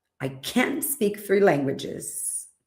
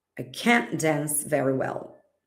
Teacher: even though I don't pronounce the T, you know it is negative because I emphasized the modal verb